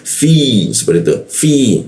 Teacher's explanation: Lalu masuk ke fi, bibir bawah digigit dia. Fi, nah ada ya ya, aksennya kuat dia di huruf fa-nya karena ada ya.